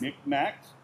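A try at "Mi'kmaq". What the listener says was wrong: You left out the apostrophe.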